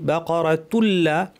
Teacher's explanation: তানবিনের পরে লাম পরিপূর্ণ ইদগাম বা সংযুক্তি হয়ে তুল্লা পড়ব, নুন থাকবে না, তানবিনের নুনটা থাকবে না।